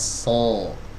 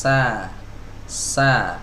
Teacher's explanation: ketika kita mengangkat lidah bagian belakang konsekuensinya suaranya menjadi menebal Hai So ya tebal suaranya so so kalau tidak diangkat lidah